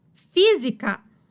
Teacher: Proparoxítona, antepenúltima sílaba tônica.